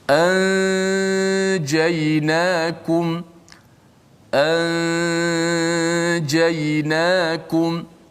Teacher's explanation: Tak boleh dia nun itu masih kekal di gunnah pada hidung. Adapun makhrajnya disembunyikan di sisi huruf jim, bunyi begini, anjaynakum, anjaynakum.